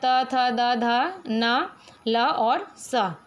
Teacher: व्यंजन वर्ण में जो है त थ द ध न ल और स, ये जो है दांत से इनका उच्चारण स्थान होता है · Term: दंत्य